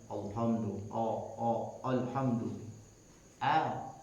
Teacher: hati-hati jangan sampai engkau mentafkhimkan, menebalkan lafaz alif atau huruf alif. Kahamzi seperti hamzah di lafaz alhamdu.